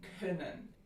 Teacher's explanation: Next to e, we have the rounded counterpart, which is as in können. This is a short, low mid, front rounded lax vowel. So it's lax just like e, but it's rounded.